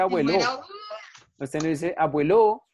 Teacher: el acento no está en la última sílaba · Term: palabra grave